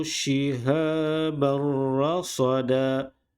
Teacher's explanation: Dua tanwin beratas bertemu dengan huruf ra, tidak ada gunnah, tidak ada dengung.